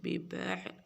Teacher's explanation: عین نکالنی ہے، حمزہ نہیں عین